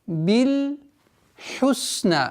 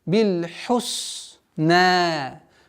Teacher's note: Обратите внимание на полноценное произношение звука ха, гортанный звук.